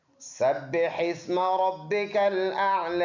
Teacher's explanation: سین سیٹی والا حرف ہے، با دونوں ہونٹوں سے ادا ہوگا جماع کے ساتھ۔ · با دونوں ہونٹوں سے ادا ہوگا جماع کے ساتھ۔ اوپر شد ہے تو ویسے بھی یہ حرف ایسے ہی ہے، یعنی سختی سے ادا ہونے والا۔